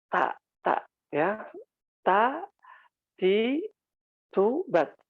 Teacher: huruf ta itu ujung lidah ya, disentuhkan ke gusi. Jadi patokannya gusi ya.